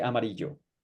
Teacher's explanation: If you talk to me, I would say amarillo. It's more like a J sound.